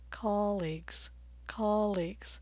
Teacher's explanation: Vowel number 8 is ah as in olive, and this word is a two-syllable noun, so I'm going to stress the first syllable